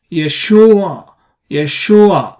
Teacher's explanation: word that's where you put a stress on the syllable so the second syllable here shu is the stress syllable or a tonic syllable